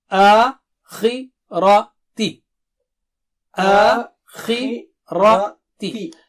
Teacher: خی موٹا اونچا ہے، زیر کی وجہ سے تھوڑی اس کی موٹائی اونچائی باریک ہو جائے گی